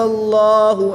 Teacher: اس میں جلالت اللہ عز و جل کے لام سے پہلے حرف پر زبر ہے تو اس لام کو پر یعنی موٹا پڑھیں گے